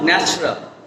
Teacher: আমরা unstress ভাওয়েলটাকে drop করে দেব।